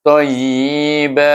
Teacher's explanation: Apabila dia tanwin, kita wakaf kat sana, ada huruf alif situ. Jadi kita baca dengan mad iwad, iaitu tayyiba.